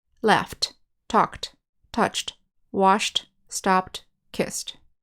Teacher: In this first column, the ed ending sounds like a T. T, t, t. Laughed, talked, touched, washed, stopped, kissed.